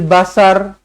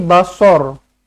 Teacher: Sod, baris atas dia bunyinya so. Bukannya sod, baris atas bunyi sa.